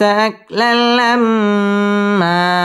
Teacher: আকলাল এটা হচ্ছে ইদগামে বেলা গুন্না গুন্না ছাড়া মিলিয়ে পড়তে হবে